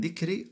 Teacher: الراء جاءت هنا مكسوره اذا تطبق عليها الترقيق ربه جاءت مفتوحه اذا هنا التفخيم لاحظت في هذين المثالين مثال